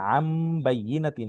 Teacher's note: আন হওয়ার কথা ছিল কিন্তু এখানে আম বাইয়িনাতিন হবে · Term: হরফ পরিবর্তন